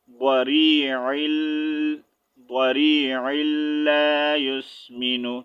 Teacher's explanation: تو ہم نے عین کو جو ہے لام کے ساتھ جوائن کر کے پڑھنا ہے